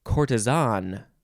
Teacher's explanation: the british say courtesan they emphasize the last syllable